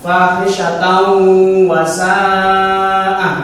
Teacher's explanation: Maka harus dimasukkan dengan mendengung 2 ketukan · Mat wajib muttasil, ada mat tabi'i bertemu hamzah pada 1 kali kalimat, maka bacanya harus dibaca 5 ketukan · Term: idgham